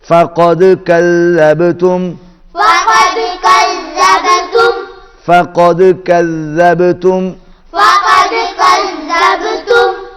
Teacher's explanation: یہاں پر دال پر بھی قلقلہ ہے اور کذبتم با پر بھی قلقلہ ہے